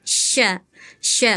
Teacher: makhrajnya dari tengah lidah nih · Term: huruf syin